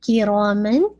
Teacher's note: کاف کی جو کسرہ ہے اس کو آپ نے باریک کرنا ہے، را کو آپ نے ہیوی بھی کرنا ہے اور 2 کاؤنٹ، کیونکہ الف مت دیا ہے نا، اس کے بعد الف آ رہا ہے تو آپ اس کو 2 کاؤنٹ اسٹریچ کریں گے.